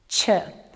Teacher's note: Tongue blade at the back of the alveolar ridge. Ch is unvoiced.